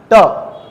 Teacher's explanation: ट जीभ क्या हो गई, उल्टी हो गई, उल्टी हो गई सर, व्यंजन कौन सा हो गया, मूर्धन्य व्यंजन।